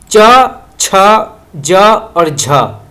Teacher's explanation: च छ ज और झ तो यह जो है स्पर्श संघर्षी ध्वनियां कहलाती हैं